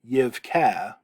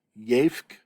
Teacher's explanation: The Segel Hey has dropped off. And as a result, emphasis gets kind of pulled toward the front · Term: jussive form